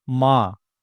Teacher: तो चांद बोलते टाइम नाक और मुंह दोनों का इस्तेमाल हो रहा है। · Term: चंद्रबिंदु